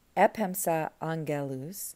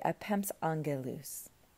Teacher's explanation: So if you're saying, I sent messengers, epemsa angelus, Attic Greek doesn't like that hiatus between the two alphas. And so we can get rid of the alpha, put an apostrophe to mark that it was there, and say epems angelus.